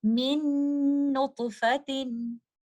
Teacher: آپ کو غنہ کی آواز بھی سنائی دے رہی ہوگی، آپ نے غنہ کو کچھ دیر ہولڈ بھی کرنا ہے